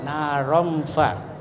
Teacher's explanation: Cara membaca tanwin masih tetap ya terdengar, tetapi antara izhar dan idgham, jadi samar-samar. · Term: ikhfa